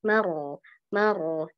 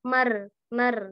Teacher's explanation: tidak ada penyempitan di tenggorokan · Tengah lidahnya cekung dan ada penyempitan di tenggorokan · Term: tafkhim